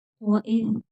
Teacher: ذال بغیر سٹی کے پڑھا جائے گا